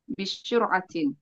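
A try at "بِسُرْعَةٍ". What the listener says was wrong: Bisuratin pakai sin. Bisuratin.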